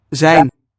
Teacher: Dutch likes these voiced fricative initials.